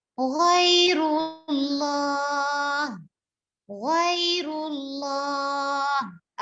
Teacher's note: इसी तरह गैन को जब हम अदा करेंगे तो गैन की आवाज में गाफ वाली साउंड नहीं आनी चाहिए